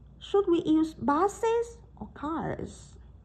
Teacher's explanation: Vậy chúng ta tăng lên sau đó, sau cái từ or thì các bạn lại giảm xuống. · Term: ngữ điệu